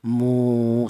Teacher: Ini juga sama, yaitu fungsinya wawu ini memanjangkan bacaan ya. Jadi huruf mim ini berharokat dhammah, ada wawunya mati, maka mu ini dibaca panjang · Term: matobi